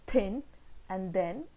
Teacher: the tip of the tongue is the active articulator and upper front teeth are passive articulators the initial sounds in the English words thin and then are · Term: dental sound